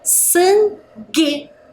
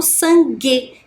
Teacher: Quando eu faço essa pronúncia, G, eu não escuto a vogal U que está ali, ó, entre o G e a vogal E, né? Eu apenas falo sangue, que vem do som G, né?